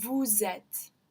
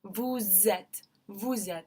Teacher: think of liaison with s more like a Z sound